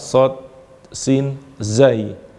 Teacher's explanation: suara tambahan yang mendesis keluar dari sifir, dari lubang-lubang yang kecil di antara gigi-gigi. Maka ini nanti ada mendesisnya. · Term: sofir